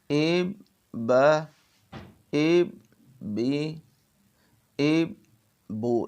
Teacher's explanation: سانس توڑتا نہیں ہوں، لیکن درمیان میں آواز کو روک لیتا ہوں